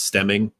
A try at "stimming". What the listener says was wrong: stimming with an I. Stimming. Stemming is like going like branching off. Stimming is any sort of like uh thing that you do with your body to release energy.